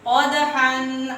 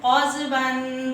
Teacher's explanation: یہ والا قاف وہ موٹا قاف ہے، اس کو منہ گول کر کے حلق سے پڑھیں